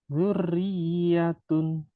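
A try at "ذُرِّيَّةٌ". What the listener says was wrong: Tempo ro tasdid dan ya tasdid samakan.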